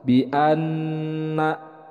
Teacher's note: Bi anna, ada nun bertasydid, hukum bacaannya adalah gunnah. Untuk pembacaan gunnah ini ditahan 2 harakat.